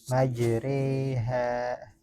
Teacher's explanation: Imalah kubro antara alif dan ya secara sempurna.